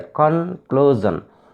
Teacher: This word ends in SIUN. So we should stress on the second syllable, clue.